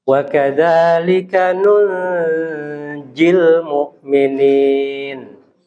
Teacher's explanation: Jadi ikhfa dia. Ya, nun sukun bertemu jim.